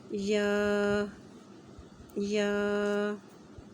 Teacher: زبان کا درمیانی حصہ اوپر بالمقابل تالو کو لگے تو یا ادا ہوگا